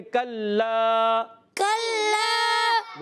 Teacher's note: کلا کاف باریک حروف میں سے ہے، کاف کو باریک رکھنا ہے، زبان کی جڑ اور تالو کے سخت حصے سے کاف ادا ہوتا ہے